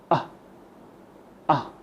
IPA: ə